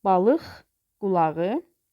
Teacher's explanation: Sonra balıq qulağı, bu 2 Q olsa da K şəklində tələffüz olunmur. Mürəkkəb sözdə birinin sonu, birinin əvvəlində işlənən Q-dan birincisi X şəklində tələffüz olunur.